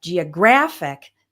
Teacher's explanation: But when we have geographic, the stress changes to right before the ic ending.